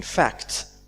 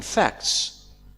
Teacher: we will hear the T in fact, so we can definitely hear T, but not in facts, so we drop T. This is called elided T.